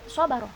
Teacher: Di sini ada huruf so, di mana huruf so itu termasuk bunyi-bunyi yang bersifat tebal. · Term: Fathah pendek tebal